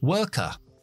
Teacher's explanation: nosotros no pronunciamos las RS después de las vocales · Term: acento británico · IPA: /wɜːk/